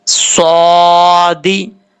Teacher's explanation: صاد کے اوپر کھڑا زبر ہے، ایک الف کی مقدار اس کو لمبا کر کے پڑھیں گے